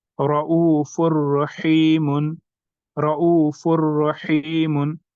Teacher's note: तनवीन के नून साकिन को हमने नेक्स्ट हर्फ में मर्ज कर दिया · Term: इदगाम